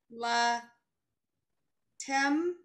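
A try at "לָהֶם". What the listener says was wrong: It's a hey. It's a hey. La hem.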